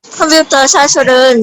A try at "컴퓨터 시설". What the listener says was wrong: 시설, 사설이 아니고 컴퓨터 시설.